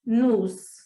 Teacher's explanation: no monossílabo átono, a tendência é que o O seja lido como um U